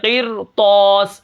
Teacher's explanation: ہم اس را کو باریک پڑھنا چاہیے تھا لیکن ہم نے اس را کو موٹا پڑھا ہے کیونکہ آگے حروف مستعلیہ کا حرف آ گیا ہے